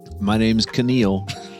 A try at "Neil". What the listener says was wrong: The K is silent. You should know that by now. As your father, I told you that when you were born, the K is silent.